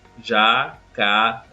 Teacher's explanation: Nós temos aí, por exemplo, a palavra jacarandá. Observe que esse dá é pronunciado com maior força. Jacarandá. Então, esse dá indica que a sílaba tônica da palavra é a última.